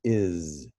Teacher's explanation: we have a vocalized z right that's the same as our z it's not an s in this case